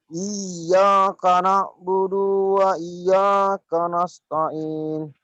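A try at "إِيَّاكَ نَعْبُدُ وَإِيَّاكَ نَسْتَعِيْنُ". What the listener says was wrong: kurang genjotannya kurang yang belakang, yang belakang.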